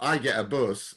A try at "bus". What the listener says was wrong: Buzz is, it's the S that's different from the correct pronunciation, which is, of course, bus. You say, which is I get the buzz.